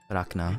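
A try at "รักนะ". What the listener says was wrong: You have to roll your tongue. If you can't, you can pronounce that clearly.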